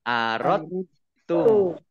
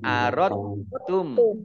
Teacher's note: Tetapi karena ada tasdid di depannya, maka dalnya tidak dibaca. Jadi langsung masuk idgham.